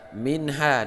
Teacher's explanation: nun mati bertemu dengan ha, ini adalah idhar hakiki, jadi dibaca tidak berdengung